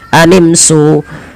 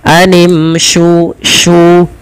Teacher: Posisi makhraj huruf shin adalah di tengah lidah kita, sya, dan dia memiliki sifat tafasyi, intisyarus saut, ya, menyebarnya suara di dalam mulut kita.